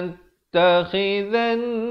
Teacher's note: Ujung lidah naikkan di atas nun bersabdu, wajibul gunnah 2 harakat.